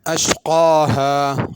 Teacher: بڑا قاف ہے، اشکا نہیں پڑھنا